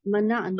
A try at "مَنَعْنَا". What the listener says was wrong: منعنا، عین کو ساکن کر دیں اور نون زبر لگا دیں، منعنا.